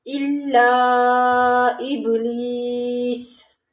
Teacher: لام کو باریک پڑھیں گے، اس کے نیچے زیر ہے اور حمزہ پہ کھڑا زبر ہے لِآدَمَ فَسَجَدُوا، یہاں پر مد ہے إِلَّا إِبْلِيسَ، ابلیس میں با ساکن ہے، یہاں پر کلکلہ کریں گے۔